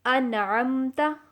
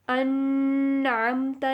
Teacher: ہم آواز کو ناک میں چھپائیں گے نہیں بلکہ ہم نے پڑھا ہے کہ ہم آواز کو ظاہر کریں گے. تو آواز کا ظاہر کرنا یہ ہے کہ ہمیں پتہ چلے ہم نون ادا کر رہے ہیں. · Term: اظہار